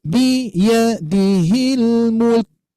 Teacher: huruf kaf ini mempunyai sifat syiddah. Begitupun juga disertai sisa nafas gitu ya. Bahkan kalau di kaidah itu hamas gitu ya.